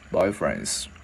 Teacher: Cái chữ Z này thường người ta biến thành chữ S cho dễ nói